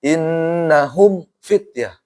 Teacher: Karena mim sama fa satu makhraj ya liqurbiha. Karena di dekat makhrajnya. · Mim ketika ketemu fa hati-hati ini. Jangan sampai jangan sampai gunnah. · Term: izhar syafawi, Izhar syafawi